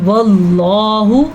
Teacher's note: اللہ کے نام سے پہلے زبر آ جائے تو اللہ کا نام پر پڑھا جاتا ہے